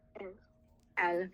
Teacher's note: You don't hear the S because in French that last consonant's not pronounced unless the next word starts with a vowel, or unless it's a C or F or L.